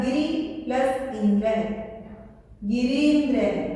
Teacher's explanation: जहां मैं short sound मैंने बोला है वहां पे छोटी बोल रही हूँ, जहां मैंने थोड़ा लंबा करके बोला है साउंड को वहां मैं बड़ी ई की मात्रा का उच्चारण कर रही